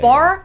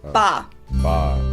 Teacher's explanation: in most German words that end on ER or AR, Germans don't actually pronounce that R, but just say ah